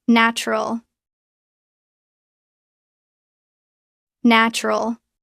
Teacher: The middle oo sound is very weak. It almost becomes nral.